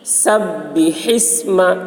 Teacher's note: با میں تشدید ہے، سین کو با کے ساتھ ملائیں گے، سختی کے ساتھ ملائیں گے. سبح اسم، ہا حلق سے ادا کریں گے. سبح اسم، ہا کو سین کے ساتھ ملا کر پڑھیں گے، یہ الف نہیں پڑھا جائے گا.